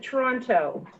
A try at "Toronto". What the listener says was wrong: You actually pronounce the T. Mo Hagan has told me it's Toronto.